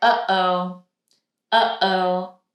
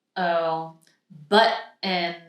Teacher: we have a flow of air and then using the throat we stop it and then let it out again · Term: glottle stop